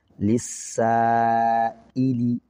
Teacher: حمزہ کی وجہ سے الف کو زائد لمبا کر رہے ہیں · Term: مد متصل